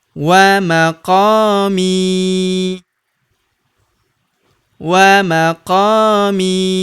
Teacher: huruf qo kita panjangkan dua harakat karena terdapat tanda alif di depannya